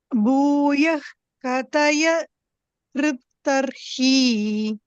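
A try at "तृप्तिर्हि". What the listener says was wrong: Triptihi, he, triptirhi. So triptihi, not triptarhi, triptirhi. Kataya triptirhi.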